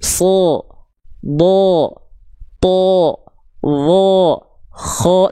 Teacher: Kalau dia tebal bunyi vokalnya itu, saya ulang lagi condong seperti vokal O.